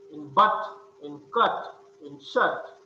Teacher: The lips are neutral, means unrounded. So it is a central unrounded vowel between open and half open.